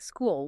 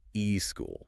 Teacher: The single beat has now been fractured into two distinct syllables. You have forced bicyllabism onto a monoselabic word. · But when the epithetic vowel is applied, the word morphs into e school. >> Two beats.